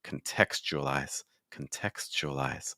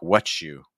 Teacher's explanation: when you have a t that is followed by that u sound or a yeah or things like that that t is instead going to become a CH sound